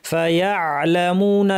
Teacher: লাম আসা পর্যন্ত আইনের আওয়াজটা ধরে রাখতে হবে